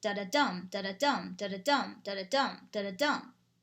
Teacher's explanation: It has 5 anapestic feet. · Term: anapestic pentameter